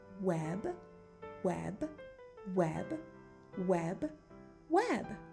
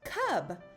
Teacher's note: Hold your air in, turn on your voice, and let your bubble pop for B. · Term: bubble sound